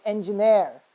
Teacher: say engineer that's a wrong pronunciation it's engineer the right one the last one is the syllable that is supposed to be stressed